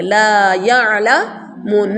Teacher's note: عین کو حلق سے نکالیں گے